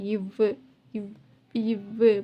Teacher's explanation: அடுத்து இவ்வுங்கிறப்ப மேல்வாயை வந்து இந்த கீழ் உதடு வந்து ரெண்டுமே வந்து டச் ஆகுது இல்லையா. இவ்வு மேல்வாய் பல்லு வந்து கீழ் உதட்டோட வந்து சேருது. அதனால் வந்து இந்த இவ்வுங்கிற வார்த்தை வந்து உருவாகுது.